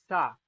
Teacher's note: सा दांतों से निकला ना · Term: दंत्य